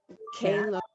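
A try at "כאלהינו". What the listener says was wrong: no, so there's no dot in the chaf. You see that? Elohenu.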